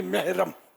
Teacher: میم ہا زبر مح، لیکن آواز وہ زیر کی نکلے گی